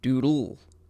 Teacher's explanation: Doodle. See how you kind of swallow and de-emphasize that second D